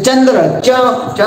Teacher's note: चंद्र च म्हणलं की जीभ टाळूला लागते